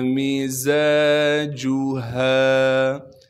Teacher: زا کو سختی سے ادا کریں گے، زا کے بعد الف مدہ ہونے کی وجہ سے زا کو ایک الف کے مقدار کھینچیں گے